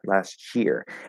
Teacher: So it's actually a lot easier and faster to blend the T into a CH by pushing, keeping the flow of air pushing through the T, which creates an SH sound, and then going into the Y. And so the T disappears and is replaced by a CH